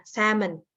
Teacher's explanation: Ini ada swa, jadi nggak ada L-nya.